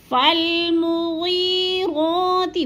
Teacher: مغی کو تھوڑا سا ہم نے لمبا کرنا ہے، 1 سے 2 الف کے برابر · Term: مدہ